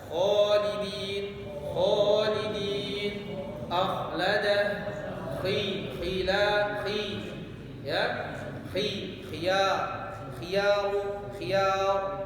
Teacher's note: Kha dibaca tebal, terangkatnya pangkal lidah.